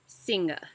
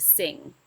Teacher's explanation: the suffix ing is often over-exaggerated, adding a g sound to the end, so it's more like singa instead of sing.